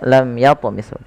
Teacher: dibaca dengan jelas suara mimnya tanpa ada penahanan dari bunyi mimnya. Tidak dibaca lam tapi langsung saja lam yatmishun. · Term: idhar syafawi